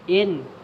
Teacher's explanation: gunnah musyaddah, dengung tahan 2 harakat